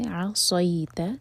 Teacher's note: عین لائٹ اور حلق سے